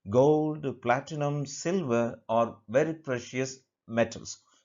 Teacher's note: So only the last word metals will take falling intonation. · Only the last word, last option will take falling intonation, whereas the rest of the options will take only rising intonation.